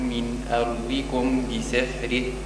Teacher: الميم عند الباء إخفاء مع الغنة